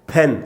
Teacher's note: जब आप बोल रहे हैं फैन, एस्पिरेट कर रहे हैं तो हवा का झोंका बाहर निकल रहा है